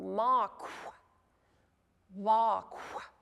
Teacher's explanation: So just pay attention and do your best when you're pronouncing to make sure that you don't just end with mak, that you follow through and blow out that little whispered W sound at the end